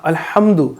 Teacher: ہا کو آپ نے ہا حلق سے پڑھنا ہے، ہا واضح کرنا ہے